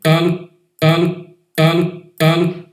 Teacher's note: ela é afetada pelo U, mas continua sendo um L, uma lateral alveolar.